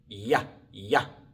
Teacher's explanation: es como la y en español excepto con la lengua más cerca del paladar atrás sin que lo toque